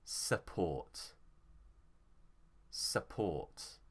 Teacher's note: Here the stress is on ought, so support.